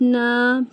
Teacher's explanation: नून मुशद्दत यहां पे गु्ना होगा। नून अलिफ यानी एक अलिफ के बराबर खींचेंगे भी।